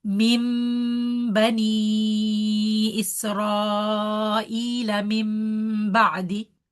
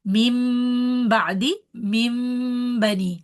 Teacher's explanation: All the cases where noon is completely merging, we should not hear the noon sound at all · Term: iqlab